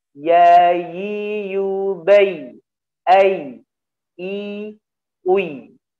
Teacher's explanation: karena ya tidak memiliki sifat ditekan, ya memiliki sifat dialirkan suaranya. Ya, lawannya adalah syiddah ditekan ya, dan ya rokhawah ya dialirkan.